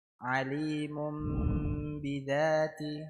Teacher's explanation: ميم تنوين بالضم منقلب لميم المخفى عند الباء المكسورة بغن حركتين